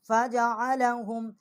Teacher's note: عین جو ہے یہ حلق سے نکالیں گے، اور ہا جو ہے یہ بھی حروف حلقی ہے، اس کو بھی حلق سے نکالیں گے